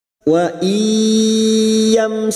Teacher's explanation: mim sukun bertemu sin idhar safawi, mim sukun dibaca jelas tanpa mendengung. Mim sukun mendengung hanya bertemu dengan 2 huruf yaitu huruf ba dan huruf mim.